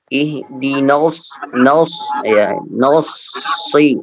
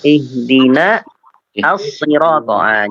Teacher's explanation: jangan sampai nun terbawa menjadi tebal ya. Nunnya tetap tipis